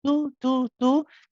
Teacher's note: thinking about where the tongue is hitting it's not pressing against the teeth remember it's pressing on the gums behind the upper teeth